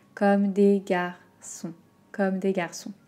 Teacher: Entraînez-vous à faire garçon si vous voulez et essayez d'atténuer un petit peu le R.